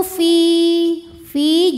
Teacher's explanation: sebab Ya Sukun didahului kasrah maka huruf Fa panjang dua harakat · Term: Mad Thobi'i